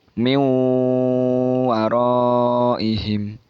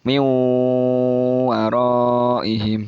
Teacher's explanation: nunnya itu tidak dibaca langsung masuk huruf wawu. Min waraihim, dan bacanya agak didengungkan, agak lama. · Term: idgham bi gunnah